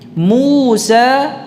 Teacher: Ya matnya tidak ada gunnahnya, tidak ada dengungnya.